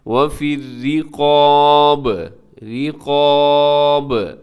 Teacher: لفظ میں، وَفِي الرِّقَابِ، رِقَاب، را باریک ہے، قاف موٹا ہے، با قلقلہ کیجیے گا کیونکہ با پہ ہم وقف کر رہے ہیں